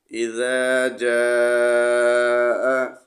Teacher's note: جیم کو 3 الف کے برابر کھینچ کر پڑھنا ہے